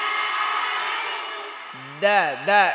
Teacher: এটা কোথা থেকে উচ্চারণ হবে জিহ্বার আগা দাঁতের গোড়া এই দুই দাঁতের গোড়া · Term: দাল